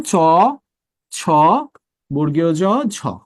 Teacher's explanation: বাট আপনারা যখন চ থেকে ঝ পর্যন্ত এই ধ্বনিগুলো বলবেন দেখবেন এদের উচ্চারণের সময় জিহ্বা তালুর সাথে আটকে যায় এবং তালু এবং জিহ্বার মধ্যে একটা ঘর্ষণ হয়। এই ঘর্ষণ থেকে এই চারটা ধ্বনি সৃষ্টি হয়। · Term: ঘৃষ্ট ধ্বনি